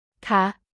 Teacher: The affirmative particle has a short falling tone, ค ่ ะ while the interrogative particle has a high tone.